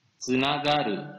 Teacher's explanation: Yang ada adalah huruf se. Ya, jadi pelafalannya adalah di lidahnya hampir mau huruf T ditahan, tapi keluarnya didesiskan. Kemudian baru dilepaskan su.